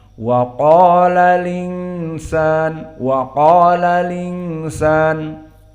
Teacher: Adapun Wars an-Nafi' dijadikan naql, hamzahnya dihilangkan. Setelah alif lam, hamzahnya dihilangkan.